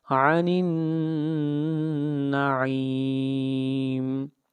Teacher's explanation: نون کے اوپر آواز ناک میں جائے گی